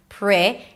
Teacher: Round your lips a little bit for the R.